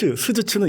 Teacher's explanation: 스즈츠는 이에서 납니다. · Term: 쇠소리